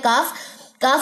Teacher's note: पहले इसकी जॉइनिंग देखेंगे कल कहां से अदा होता है काफ काफ अदा होता है जुबान की जड़ यानी कि अक्स लिसान जो है जब ये नर्म और सख्त दोनों तालू से लगता है